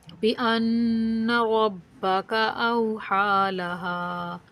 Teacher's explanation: रा को पुर मोटा करके पढ़ेंगे और सिर्फ हा को ही खींचेंगे, वाव हरूफ लीन है, बगैर खींचे नरमी से पढ़ेंगे